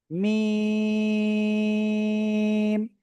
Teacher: তো দেখেন এই যে অক্ষরটা, এই অক্ষরের নাম কি? দুই ঠোঁটের বাইরের অংশ থেকে অক্ষরটা উচ্চারণ করব, নাম হলো মিম।